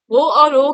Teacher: Same उसी तरीके से है, अ प्लस उ से मिलके होता है आपका ओ और अ, तो अ का उच्चारण स्थान कंठ है, उ का ओष्ठ है, इसीलिए इसको कंठोष्ठ बोलते हैं।